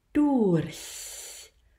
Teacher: That is the key. The tongue has to be in E, even though you don't say E. The air has to start forward on the alveolar ridge for the sound to be focused and thin in nature. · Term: ich-laut